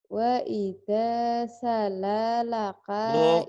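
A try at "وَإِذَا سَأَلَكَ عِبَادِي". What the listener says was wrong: Itu A. Sa'a. Lam nggak mungkin. Kalau la nggak mungkin pisah. Kalau lam gabung. Sa'alaka.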